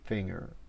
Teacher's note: There's no G in there, the way we usually say it, finger. So that N is kind of like an NG, but you kind of don't get around to finishing the G.